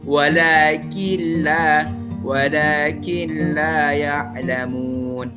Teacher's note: Artinya seolah-olah nun ini tidak terbaca, tidak ada, tetapi langsung dimasukkan ke huruf la atau digabungkan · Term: idgham bila gunnah